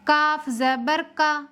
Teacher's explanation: کاف حروف مستفیلہ میں سے ہے، باریک کر کے پڑھیں گے